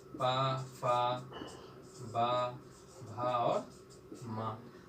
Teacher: ओंठ दोनों चिपक जा रहे हैं, वायु रुक गई। इसीलिए स्पर्श व्यंजन का जब हम उच्चारण करते हैं तो अवरोध होता है, वो पूरी तरह से अवरोध होता है। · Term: पा वर्ग